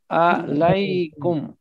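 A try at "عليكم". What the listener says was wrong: ہاں، اس کو ایسے نہیں پڑھنا ہے فارسی یا اردو کی طرح، علیہم، علیہ، علیہم، علیکا، علیکم نہیں، پورا علیکم، جیسے السلام علیکم، ہم اس میں بھی کرتے ہیں السلام علیکم، ہاں نرم بالکل۔ چلیے نیکسٹ، علینا،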